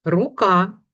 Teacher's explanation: Правильно, звук р - твердий.